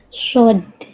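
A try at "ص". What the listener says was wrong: Jangan shod, shod. shod itu huruf tebal, huruf tipis Bunda. Tebal. Coba kita tebalkan dengan cara apa nembalin huruf Bun? Oke, coba sekarang lebih angkat pangkal lidahnya biar bunyi shotnya nampak tebalnya.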